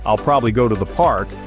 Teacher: For example, in the sentence, "I'll probably go to the park," the words probably and park are stressed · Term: stress-timed